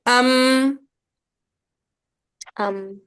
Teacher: मीम दोनों होंठों के मिलने से अदा होता है